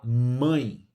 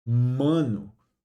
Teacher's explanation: O M ele obrigatoriamente faz os lábios, né, se encostarem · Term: som do M